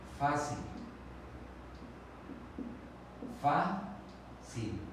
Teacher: La que suena con mayor intensidad es la penúltima sílaba. Entonces aquí tenemos una palabra grave.